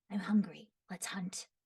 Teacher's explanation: he's a little bit high pitched, but he also kind of has a little bit of a growly thing to him